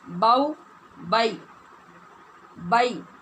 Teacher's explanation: اور یا سے بھی پہلے جب زبر ہوگی تو یہ یا بھی لین ہوگی، اس کو پڑھیں گے با زبر یا ساکن بائی، باؤ بائی بائی۔ آواز کھولنا ہے زبر کی وجہ سے، اور آواز کو کھول کر ادا کرنا ہے، بئی بئی نہیں کرنا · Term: حروف لین